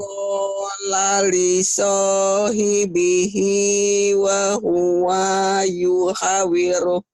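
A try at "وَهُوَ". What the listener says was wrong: Wa-nya pendek. Wahuwa. Wahuwa yuha. Karena ibu panjang pendeknya belum paham betul. Nah, panjang pendek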